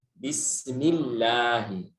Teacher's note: Alif di lafzul jalalah Allah itu jadi tipis karena harakat lafzul jalalah sebelumnya ada harakat kasrah.